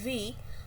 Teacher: When we say v, vocal cords are vibrating, so it's voiced. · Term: voiced labiodental fricative